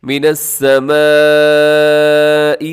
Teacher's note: بڑی مد، مد متصل 4 سے 5 سیکنڈ تک لمبا کیجیے گا